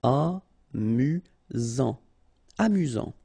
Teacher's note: You've got only one S here between the vowels, so it's really this Z sound.